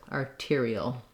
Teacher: dark syllabic l with the schwa before it